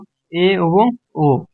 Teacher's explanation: ঠোঁটের উন্মুক্তি অনুযায়ী অধঃসংবিত এ এবং ও